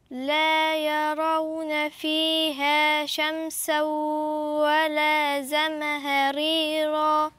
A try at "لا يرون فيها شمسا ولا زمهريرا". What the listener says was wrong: بس مش عايزة أقلقل الميم، لأن ده مش من حروفها، هي مش من حروف القلقلة، فمش هقول زمهريرا، زمهريرا.